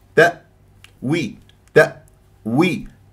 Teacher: قفلت الاوتار الصوتيه مرتاح انا في اقصى الحلق ما قلقلت الهمزه